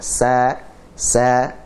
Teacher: dia tidak naik dan juga suaranya tidak terkumpul di dalam mulut. Langsung keluar. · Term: sifat infitah